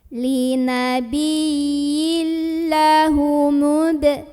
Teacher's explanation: linabiyil langsung masuk ke lam tanpa ditahan, ya nggak ada dengung, masuk tanpa berdengung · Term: idgham bila gunnah